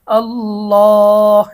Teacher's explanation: আল্লাহ শব্দের লামকে মোটা করলাম এটার কারণ কি আমরা যদি আমাদের 10 সূত্র কোরআন শিক্ষা বইটা থেকে সাত নং সূত্রে যাই সেখানে দেখব আল্লাহ শব্দের ডানে জবর বা পেশ হইলে আল্লাহ শব্দের লামকে মোটা করিয়া পড়িতে হয়।